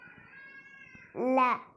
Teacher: இந்த ல சொல்லும்போது முன்னாடி இருக்கிற பல்லை தொடணும்.